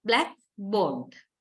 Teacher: But if you use these two words separately, then blackboard, you give similar stress, similar primary stress to both words, black and board.